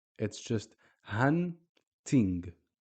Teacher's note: It's a stop in pronunciation. We're only making the N sound. We're not adding any vowels afterwards. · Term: sukoon